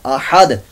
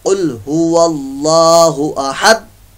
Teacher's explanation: दाल साकिन में यहां कलकला होगा